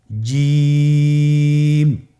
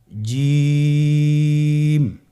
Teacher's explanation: জিহ্বার মধ্যখান তার বরাবর উপরে তালুর সঙ্গে লাগিয়ে উচ্চারণ করতে হয়।